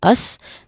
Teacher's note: Again, us. There's a schwa sound there, so it's relaxed, it's unstressed, it's a weak vowel sound. It's like but you replace the end with a hissing sound.